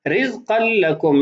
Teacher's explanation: رزقا لكم یہاں ادغام تو ہوگا لیکن غنہ نہیں ہوگا